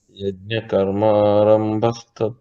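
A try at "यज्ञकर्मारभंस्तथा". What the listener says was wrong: You are seeing the dot there and you are thinking it is Arambha. That is what you are used to. In Sanskritam, if it is Arambha, it will be written as Ra, Bha.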